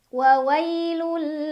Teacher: Ada idgham bila gunnah karena ada tanwin dhammah yang bertemu huruf lam. Cara bacanya tanwin dhammah dileburkan atau dimasukkan ke huruf lam tanpa berdengung. Jadi cukup ditekan.